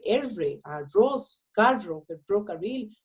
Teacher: Por ejemplo, la R, que yo lo estoy pronunciando particularmente de manera vibrante o sonora, los ticos tendemos a decir R, arroz, carro, ferrocarril o cosas por el estilo.